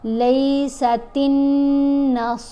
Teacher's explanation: غنہ یعنی آواز ناک میں جائے گی، ایک حرکت کے برابر اس کو ٹھہر کر پڑھا جائے گا. لیست النصارى، صاد اور را دونوں کو ہم نے موٹا پڑھنا ہے، دونوں کی آوازیں بھاری آوازیں ہیں، ٹھیک ہے.